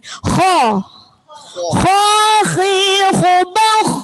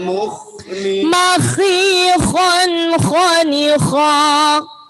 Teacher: Kho itu ada di tenggorokan di tengah-tengah. Kho seperti jenengan ngorok persis sekali.